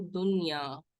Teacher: سو دنیا کو نون اظہار کے ساتھ پڑھا جیسے اردو میں پڑھتے ہیں